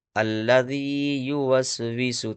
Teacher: یہاں پر یا مدہ ہوگا، کیوں ہوگا، تو یا ساکن سے پہلے ذال کے نیچے زیر ہے، اس لیے یا مدہ ہوگا، اور اس کو تھوڑا سا کھینچ کر کے پڑھتے ہیں